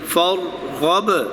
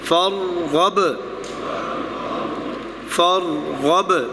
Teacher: صبرن. فرغب، را ہلے نہیں، را کو پکڑ کے. فرغب. با جو آخر پہ ہے وہ ہلے، اس میں جنبش ہو کیونکہ وہ قلقلہ میں ہے